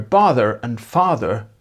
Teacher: North American accents have merged the vowel in lot with the one in calm in the so-called bother-father merger, where bother and father end up with the same vowel.